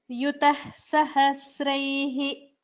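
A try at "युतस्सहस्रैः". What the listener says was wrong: Okay, you are telling it as Yutah Sahasraihi. Yutas. You can tell a Sakara. Yutas Sahasraihi. So the way you are pronouncing is very apt when instead of Sakara, if it is a Kakara. So there, this is a very exact pronunciation. The way you are pronouncing, that is a Jihva Muliya sound. So Kah Karoti, etc.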